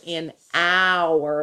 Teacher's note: It actually starts with an H, which is a consonant, but when you listen to it, an hour, that's a vowel sound that you hear first.